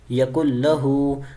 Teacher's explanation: یکل، لام زبر لا، یکل لا، ہا الٹا پیش ہو، یکل لہو. اب نون ساکن ہے، اس کے بعد حروف یرملون کا لام آ رہا ہے، ادغام کا قاعدہ تو لگ رہا ہے لیکن گنہ نہیں کر رہے